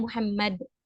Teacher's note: ketika kita wakaf kan jadi bunyinya Muhammad gitu Nun sukunnya sudah hilang